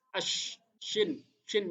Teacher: Ash, lidah tengah ini. Ash, shin, shin besar itu lidah tengah berperan